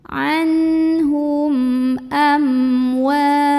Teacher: Maka cara membunyikan mim sukunnya ini adalah dibunyikan dengan jelas, bunyi dan tidak perlu ditahan. Anhum amwa, ada hukum izhar syafawi.